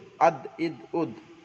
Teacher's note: দালের মাখরাজ জিবের আগা সামনের উপরে দুই দাঁতের গোড়ার সঙ্গে লাগিয়ে উচ্চারিত হয় দাল, হামজা দাল যাবে আদ, এখানে একটু কলকলা হবে, কলকলা মানে ধাক্কা দিয়ে পড়া।